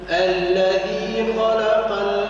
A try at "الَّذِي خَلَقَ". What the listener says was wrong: رقق اللام بين مفخمين. اللام هي بين مفخمين، بين الخاء المفخمة وبين ماذا؟ القاف المفخمة. خلق، خالق.